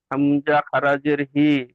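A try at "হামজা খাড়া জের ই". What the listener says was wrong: হামজা খারাজের হি নয়, হামজা খারাজের ই।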